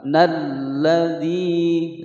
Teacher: masuk dari huruf nun ke al. Ini hukum bacaan al-syamsiyah, langsung ditekan dimasukkan ke huruf lam. Nalladhi, zi dibaca panjang matobi'i sebab ada ya sukun sebelumnya kasroh.